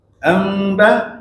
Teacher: Kena pastikan ada dengung di hidung. Pada masa sama tak bunyi mim mati. Ejah dah bibir tu jangan bunyi mim mati. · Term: ikhfa